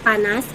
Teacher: konsonan yang dihasilkan dengan mempertemukan kedua belah bibir yang bersama-sama bertindak sebagai artikulator dan tidak aktif lesnya bunyi yang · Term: konsonan bilabial